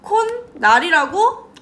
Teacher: 니은 하나만 이제 덧나는 거지